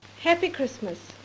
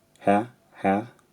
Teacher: The vowel in happy again has a slight central off glide